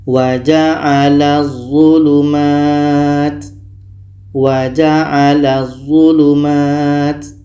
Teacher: Bunyi la masuk ke za dan tidak boleh dengung.